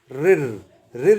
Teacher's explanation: जब बोलते हैं तो जीभ जो है वह कहां लग रही है अगले हिस्से में यानी कि दांतों के ऊपरी हिस्से में उसे मूर्धन्य कहते हैं यह शब्द याद कर लो कंठ तालव्य